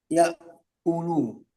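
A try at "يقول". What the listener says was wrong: Oke, bagus.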